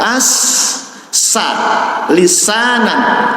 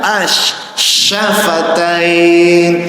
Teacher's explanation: Min syarril waswasil, sin ujung lidah, sya tengah lidah.